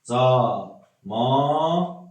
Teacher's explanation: Burada artıq 2 qoşu A-dan biri düşdü.